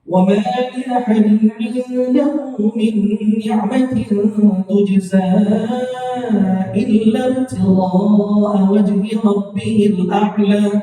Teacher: dibaca empat harokat karena ada jaiz munfasil